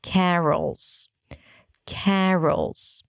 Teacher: An R sound, a schwa, and a dark L.